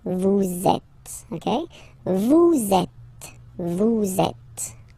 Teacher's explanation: vous is ending with S, and then you tend to make a little link between them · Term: liaison